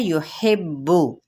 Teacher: हा वज़्न हल्क से अदा करते हुए बा तशदीद की वजह से इस पे दबा के इसको अदा करेंगे, लेकिन ये याद रखना है ज़म्मा यानी पेश की हरकत को लंबा नहीं करेंगे।